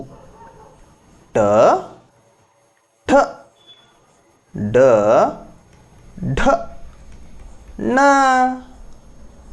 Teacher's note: ಇವೆಲ್ಲವೂ ಮೂರ್ಧ್ಯದಿಂದ ಜನಿಸುವುದರಿಂದಾಗಿ ಹುಟ್ಟುವುದರಿಂದಾಗಿ ಇವುಗಳನ್ನ ಮೂರ್ಧನ್ಯ ಎನ್ನುವರು